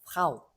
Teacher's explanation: 아랫입술을 물었다가 하고 놓고 이렇게 에르 발음을 해주고 그 다음에 모음을 좀 주로 발음을 하는 그런 단어가 되겠어요.